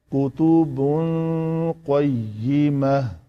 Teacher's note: فیہا کتب قیمہ، قاف کو کتبن، یہ جو لوتھڑا لٹک رہا ہے وہ جب بالمقابل تالو کے ساتھ لگتا ہے تو یہ ہے قاف، تو اس سے ذرا پیچھے کاف، کتاب۔ تو تنوین کے بعد قاف ہے تو یہاں پہ اس تنوین کا ہم نے اخفا کیا، اس کو کتبن قیمہ نہیں پڑھا اس کی طرح، من اہل الکتاب کی طرح، یہاں پہ ہم نے اخفا کیا کتبن قیمہ۔